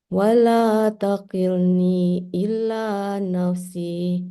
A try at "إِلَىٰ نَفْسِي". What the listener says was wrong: Ya, bukan ila, ila panjang. Jangan ditasydid. ila. Ila kan? Kalau illa kecuali kalau pakai tasydid.